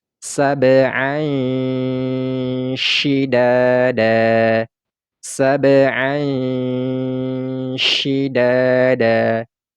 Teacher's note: suara tanwin ini kita samar-samarkan seolah-olah kita mau langsung menyebutkan huruf syinnya sehingga ini suara tanwinnya ini terdengar samar-samar sab syidada sab syidada